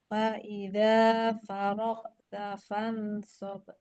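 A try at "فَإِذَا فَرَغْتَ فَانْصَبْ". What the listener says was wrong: Jangan fan. Fansab ke arah huruf so. Iya, sob.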